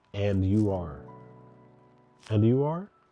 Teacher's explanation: The rising intonation at the end, and you are, makes it seem more like a suggestion instead of a question.